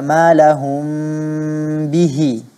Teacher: mim-nya disamarkan dengan cara tidak menutupnya dengan kuat ya ditutup berjumpa antara kedua bibir yang atas dan yang bawah tapi tidak perlu ditekan setelahnya ada huruf ba yang sifatnya ada letupannya dia kita harus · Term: Ikhfa Syafawi, ikhfa syafawi